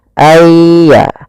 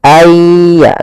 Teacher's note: Kalau di sini hurufnya adalah ya, maka masukkan nunnya kepada ya, sehingga nunnya hilang, tinggal iya-nya. Ayya, langsung ditasdidkan dia seakan-akan ya-nya 2. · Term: idgham bi gunnah